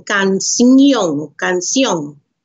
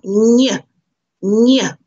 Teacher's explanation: it's like making an N and a Y together. So your tongue has to go to the top of to the roof of your mouth. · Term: Ñe sound